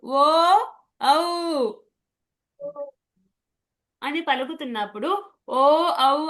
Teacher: కంఠం నుంచి వస్తుంది స్వరము. ఓష్టాలు రెండు పెదాలు కొంచెం కలుస్తున్నాయి. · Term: ఓష్టవ్య